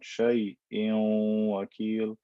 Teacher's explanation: I take the e or the n sound and I merge it with the wa sound.